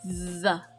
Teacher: So it vibrates. You feel your tongue actually vibrating against your teeth. And then it pulls into your mouth as well. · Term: voiced TH sound